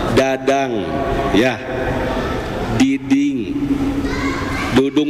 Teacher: Kalau huruf D itu lidah dengan gusi Pak.